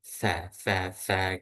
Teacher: angin tuh benar-benar mengalir berhembus dari sela-sela gigi